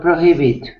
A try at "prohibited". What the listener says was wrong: That's right. Prohibited.